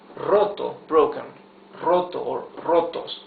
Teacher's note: the r at the beginning of a word is the rough r